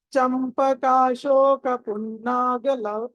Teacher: తీస్తున్నారు గ దీర్ఘం కాదు గ అల్ప ప్రాణం ఇది గ అన్నది దీర్ఘం లేనటువంటి హ్రస్వ అక్షరం